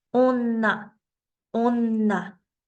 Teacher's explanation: La doble N simplemente la voy a pronunciar más fuerte.